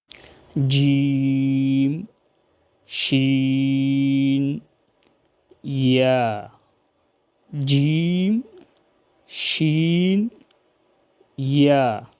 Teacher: زبان کا درمیان جب اپنے مقابل اوپر تالو سے لگ جائے تو اس سے جیم، شین اور یا ادا ہوتے ہیں۔ یا متحرک اور یا لین، یا متحرک اور یا لین، یا مدہ جو فدہن سے ادا ہوتی ہے۔